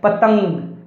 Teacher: अनुस्वार वाले जो वर्ण हैं उसका उच्चारण हम जब करेंगे तो हवा हमारे केवल नाक से बाहर आएगी · तो नाक में आपको वाइब्रेशन फील होगा